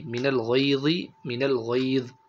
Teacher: غین کو اور ضا کو پر کر کے پڑھیں گے